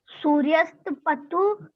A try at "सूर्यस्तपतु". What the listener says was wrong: फिर वही सूर्यस्पतु। सूर्यस्पतु क्यों पढ़ रहे हो? पतु है इसमें। मैं बता रहा हूँ दो शब्द हैं आपके, सूर्यस तपतु। ता का उच्चारण क्यों नहीं कर रहे हो?